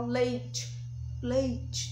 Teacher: O I, ele é considerado uma semivogal. Por quê? Porque o som dele sai o som fraco, ó, leite, leite.